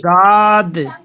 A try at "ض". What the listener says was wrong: اور موٹا کیجیے ضاد.